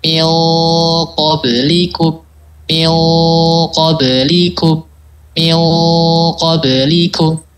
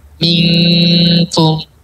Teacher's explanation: Jadi itu qaf punya sifat tebal, gitu sehingga dia harus mengikuti makhrajnya qaf.